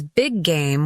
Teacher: When words end and begin with the same sound, they merge. Big game becomes big game with one G sound, not 2.